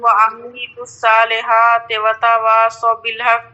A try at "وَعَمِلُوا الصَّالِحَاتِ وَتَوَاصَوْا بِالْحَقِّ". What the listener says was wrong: ابھی بھی کھینچ رہی ہیں آپ. یہاں پر آپ کو کہاں دو واو نظر آ رہا ہے. ایک تو وہ عملو ابھی کھینچ رہی ہیں، صحیح نہیں ہوا ہے.